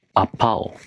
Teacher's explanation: What did I say? I said apple. But placed stress on the second syllable.